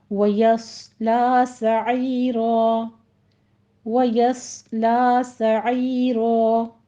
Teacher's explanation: यस लॉ नहीं कहना, یسلا، یا پہلے آپ نے یا بھی موٹا نہیں کرنا، یا بھی باریکی رکھیے گا، یس صرف صاد پر ہوگا، آگے لام بھی باریک ہے، وَيَصْلَى سَعِيرًا، عی میں عین وسط حلق سے ادا کرتے ہوئے آگے یا مدہ ہے اور آخر پہ وقف ابدال کر لیں گے رو کو مفخم پڑھتے ہوئے